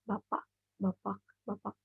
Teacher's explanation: It's written bapak, but we pronounce bapak without K. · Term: glottal